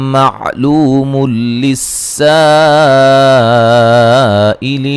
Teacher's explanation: ملانے کی صورت میں نون تنوین کا ادغام ہوگا، بلا غنہ، غنہ نہیں کریں گے